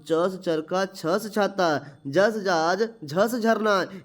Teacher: च छ ज झ को स्पर्श संघर्षी व्यंजन कहते हैं